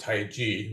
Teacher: really should be pronounced tai chi with the j sound which is how it's phonetically pronounced in mandarin chinese